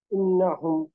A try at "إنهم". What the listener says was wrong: হ্যাঁ, নুনের উপর কিছুটা অপেক্ষা করতে হবে।